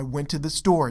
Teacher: I went to the is faster and then store is emphasized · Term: rhythm